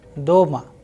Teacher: In case of doma, again the sound of o is higher than the a. So, the sound is doma.